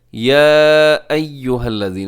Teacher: یہاں پہ جو مد ہے مد منفصل، کیونکہ یا الگ ہے اور ایھا یہ الگ جو ہے لفظ ہے